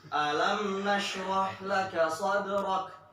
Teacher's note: Dalnya ditahan, kafnya dilepas.